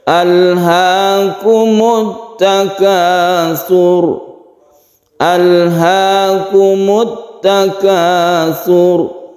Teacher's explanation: Alhaakumut takatsur, pendek saja saknya ini tipis karena sak, kemudian karena roknya ini bersukun sebelumnya dhamma, maka roknya dibaca tebal atau tafkhim.